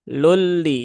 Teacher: Tanwin bertemu dengan lam berarti ada idgham bila gunnah ya.